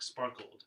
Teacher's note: sparkled is like not really an additional syllable but just like kind of an ending consonant to spark